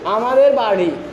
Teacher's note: আমাদের বাড়ি এখানে শুধু জিহ্বায় একটু করে কম্পন হচ্ছে